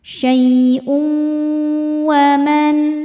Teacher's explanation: Cara bacanya masukkan tanwinnya ke wau kemudian dengungkan, tahan. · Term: idgham bighunah, idgham bi gunnah